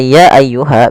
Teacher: Maka apabila ada kata ya ayyuha, biasanya kita sebut dengan bacaan mad jaiz munfasil yang kita panjangkan sepanjang 4 harokat.